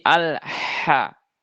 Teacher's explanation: ha yaitu makhrajnya dia di tengah tenggorokan ya, wastul halqi. Jadi dialirkan udaranya supaya memperjelas huruf ha-nya karena dia sifatnya hames.